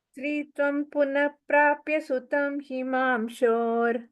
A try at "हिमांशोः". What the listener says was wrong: அந்த இர விசர்க்கமா போட்டு வவ்ரே பதிம் புத்திரமசூத சைஷா.